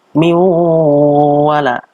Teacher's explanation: Ada nun mati bertemu dengan wawu, namanya adalah idgham bi gunnah.